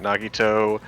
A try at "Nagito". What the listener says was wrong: did you say his name like that? You just said it very pronounced, like with a toe, and it's like what? Yeah, it was like very strange. You sounded like Caleb for a second.